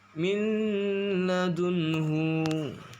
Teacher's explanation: Cara membacanya gunnah atau dengung, yakni dengan meleburkan huruf nun ke dalam huruf lam dan ditasydidkan sehingga dibaca min ladunhu.